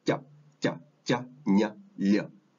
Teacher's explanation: these sounds are all pronounced with the tongue, the tip of your tongue, pressed down against the bottom front teeth, the bottom of your teeth, and the middle of the tongue presses up against the roof. So it's ja, ja, ja, nya, lya. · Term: the J sound